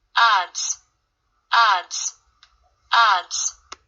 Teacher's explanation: 자, 그런데 이거는 밑에는 보니까 D 사운드 밑에 S가 붙었죠. 그러면 D 사운드가 유성음이기 때문에 D 사운드 유성음 뒤에 S가 붙었으니까 이거는 유성음으로 소리가 나야 될 겁니다.